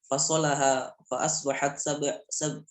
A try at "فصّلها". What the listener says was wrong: Nah ini pakai tasdid ya dibacanya. Fassalah.